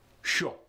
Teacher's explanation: for show in the standard american english it's pretty normal but in the russian accent it's more staccato it's shorter